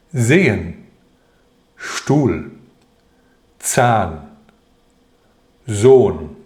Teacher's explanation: 在元音后不发音，但表示前面的元音要读长音